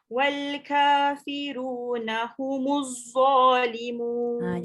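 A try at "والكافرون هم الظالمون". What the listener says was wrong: Jaga hujung lidah keluarkan. Wal kafiruna humudz. Kejap, dia masih ada bunyi z. Dia tak boleh ada desiran. Humudz, hujung lidah keluar.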